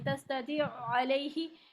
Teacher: ख्याल ये रखना है कि तौ की ज़ेर लंबी ना हो जाए, याई मद्दा ना बने